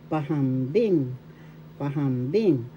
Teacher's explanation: First syllable pa, second syllable ham, third syllable bing. The third syllable has the accent.